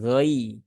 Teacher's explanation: sukunnya itu adalah bunyinya i ya, bukan e ya, bukan gairi ya, bukan juga ghairi ya, tapi ghai.